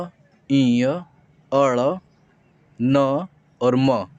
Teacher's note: जो वर्ण होते हैं यह अंग य अड़ न और म यह पांचों वर्ण जो होते हैं यह नाक से निकलता है इनका जो उच्चारण स्थान होता है नाक होता है इसको ना नासिक कहते हैं नासिक वर्ण भी कहते हैं नाक